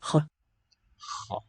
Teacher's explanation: This is the velar fricative, it's KH in their system.